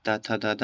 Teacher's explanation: इसमें अपना जो जीभ होता है वो ऊपर के दांत पर लगती हैं। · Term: दंत ध्वनि